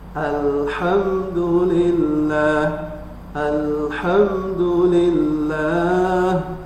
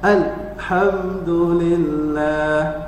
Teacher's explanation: Ketika lam disukun, ya, maka membaca sifatul tawassut dengan cara tidak digentakkan, ya, kemudian tidak terlalu panjang